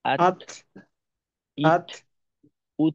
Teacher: তায়ে বাতাস আর একটু কম রাখতে হবে।